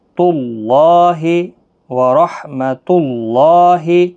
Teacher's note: موٹا پڑھنا اللہ کا لام اس پیش کی وجہ سے